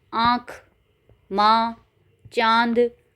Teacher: अनुनासिक या सानुनासिक मुख और नाक दोनों से